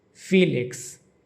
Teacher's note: In English, his name is Felix, with the emphasis on the first syllable phi. Felix. In Korean, Pil-lik-seu.